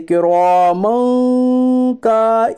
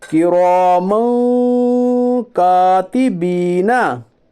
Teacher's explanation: छोटा काफ है, इसलिए इख्फाए हकीकी होगा। यानी दो ज़बर की तनवीन को नाक में छुपाकर गुन्नाह के साथ पढ़िए, इसे इख्फा कहते हैं।